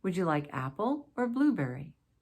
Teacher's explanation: Basically, choice questions are listing options for you to choose among, and that's why the intonation on the first and middle items will be a rising intonation, and just that last item will have a falling intonation.